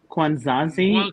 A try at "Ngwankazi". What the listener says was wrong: It is the nasal is your N. Ngwankazi. The nasal N is there for the nasal. Ngwankazi.